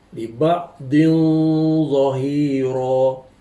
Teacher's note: Tanwin bertemu dengan huruf dha, dibaca dengan samar-samar di antara hukum izhar dengan idgham dan juga dengung. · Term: ikhfa hakiki